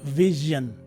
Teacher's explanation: you will see that the stress is in the first syllable